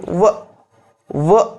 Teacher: ವ ವ ಅಂದಾಗ ಹಲ್ಲು ಮತ್ತು ತುಟಿ ಎರಡೂ ಕೂಡ ಬಳಕೆ ಆಗುವಂತಹದ್ದು. ಹಾಗಾಗಿ ವ ಇದು ದಂತೋಷ್ಟ್ಯಕ್ಕೆ ಉದಾಹರಣೆಯಾಗಿ ನಿಂತ್ಕೊಳ್ತದೆ.